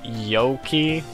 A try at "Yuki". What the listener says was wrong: It's Yuki. The O isn't pronounced, I think.